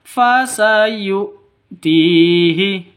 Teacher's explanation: Bukan dibaca seperti Ain fasu salah yang betul fasu TII begitu Ti panjang dua ketukan ada ya mati diawali dengan kasrah panjang dua ketukan mad asli Terus ajron fastii ajron ajron kenapa